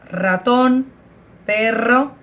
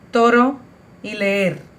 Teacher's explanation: en la palabra ratón y en la palabra perro tenemos un sonido un poco más fuerte, mientras que en las palabras toro y leer tenemos un sonido un poco más débil